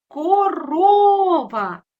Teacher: Наголос падатиме на другий склад.